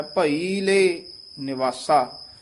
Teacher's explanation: ਇਹਨੂੰ ਭਈਲੇ ਕੱਠਾ ਵੀ ਨੀ ਕਹਿਣਾ ਹੈ ਭਈਲੇ ਇਉ ਵੱਖਰਾ ਵੀ ਨੀ ਕਹਿਣਾ ਹੈ ਡੈਸ ਦੇ ਕੇ ਵਿਚ ਲਮਕਾ ਕੇ ਬੋਲਣਾ ਹੈ